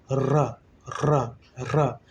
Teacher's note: इसके उच्चारण में जिह्वा जो है मुख के मध्य में आकर तेजी से लड़खड़ाती या प्रकंपित होती है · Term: लुंठित